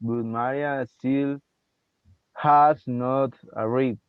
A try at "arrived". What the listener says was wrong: Arrived, arrived. Make sure you mention the D at the end. Arrived.